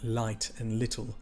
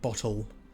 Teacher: The L sound in Sindarin is a soft sound, so light and little, not the hard sound like bottle.